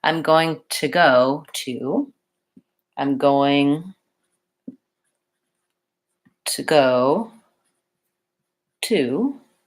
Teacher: But when I said I'm going to go, I didn't say I'm going to go. I actually changed that vowel and I said a reduced vowel, schwa, and it sounds like ta.